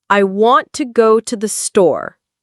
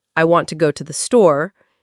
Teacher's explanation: Stress on want, go, store. Not I want to go to the store equal stress. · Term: Rhythm